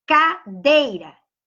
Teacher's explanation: O E vem primeiro que o I, ou seja, o E que é vogal, vem primeiro que a semivogal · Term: ditongo decrescente